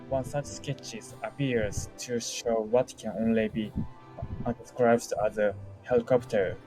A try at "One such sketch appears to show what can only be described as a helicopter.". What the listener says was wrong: All right. Sketch. No S. Sketch.